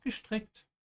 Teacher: Yeah, be especially careful with the verb here, stricken. Remember when the S comes before a T, most of the time it's pronounced sh